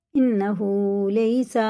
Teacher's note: یہ بندہ ہے، دونوں کھینچ کے پڑھنا۔ انہو لیسا، اب دیکھیں یا ساکن سے پہلے زبر اگر آتا ہے تو یہ حرف لین ہوتا ہے، اسے جلدی پڑھتے ہیں